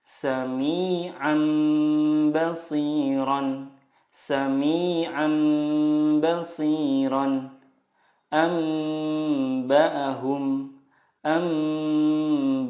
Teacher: cara membacanya mengganti nun sukun dengan mim sukun dan disertai guna du sampai t harakat contohnya samiam biron samiam bashiron ambaahum amaahum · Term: iqlab